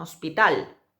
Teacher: Y además es aguda. La sílaba tónica es la última